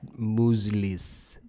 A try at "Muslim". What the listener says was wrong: That sounds like you're saying muesli.